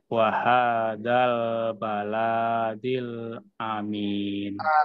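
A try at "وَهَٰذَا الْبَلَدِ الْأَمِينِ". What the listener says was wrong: Lamnya pendek, baladil ya.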